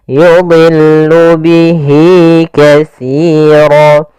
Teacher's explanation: dha di sini huruf isti'la termasuk huruf tafkhim, maka dia tetap ditebalkan